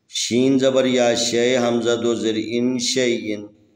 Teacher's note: یہاں پر یا حروف مدی میں سے ہیں، ساکن ہیں، اس سے پہلے حرف کے اوپر زبر ہے، لذا یہ لین طریقے سے نرم طریقے سے ادا کریں گے